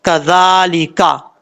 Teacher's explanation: زال کو سیٹی کے ساتھ نہیں پڑھنا، بغیر سیٹی کے ساتھ پڑھنا ہے